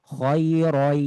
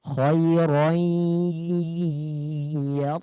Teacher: Idgham bigunah. Bigunah itu dengan suara yang dengung atau sengau di hidung.